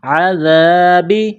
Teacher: ذال کو باریک کرنا ہے، نرم کرنا ہے